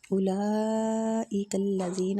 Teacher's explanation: اولئک میں جو مد ہو رہی ہے مد واجب متصل ہو رہی ہے، اس کو کھینچنے کی مقدار 5 حرکات